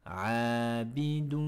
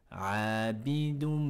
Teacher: il faudra mettre une runna, un nasillement au niveau de la cloison nasale